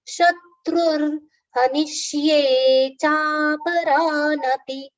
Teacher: Shatru, and there's a visarga, and the pronunciation after it is ra, half ra.